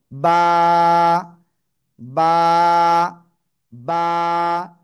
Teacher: দুই ঠোঁট, দুই ঠোঁটের ভিতরের অংশ বা ভিজা অংশ থেকে উচ্চারণ হবে। এক আলিফ টেনে পড়তে হবে।